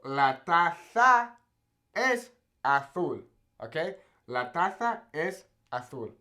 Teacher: in Spain, they have that, right? That kind of lisp when they say their Z's